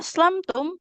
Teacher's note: A aslamtum karena fathah tidak bertemu dengan alif, maka enggak boleh dipanjangkan